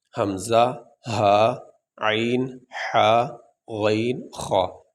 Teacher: حروف حلقی 6 ہیں، حمزہ، ہا، عین، حا، غین، خا، یہ 6 حروف ہیں، ان کو کہتے ہیں حروف حلقی، یہ حلق سے ادا ہوتے ہیں